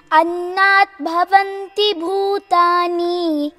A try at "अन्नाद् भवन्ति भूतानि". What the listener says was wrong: अन्नात् plus भवन्ति becomes अन्नाद् भवन्ति दया द अन्नाद् भवन्ति भूतानि